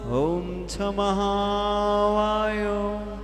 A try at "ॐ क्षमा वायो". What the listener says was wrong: बहुत ध्यान से अब अपने मन से उच्चारण, होठ हिलने चाहिए। और उच्चारण को होठ नहीं हिल रहे आपके।